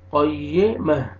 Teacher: मीम को हा के साथ मिलाएंगे और हा का साउंड आना चाहिए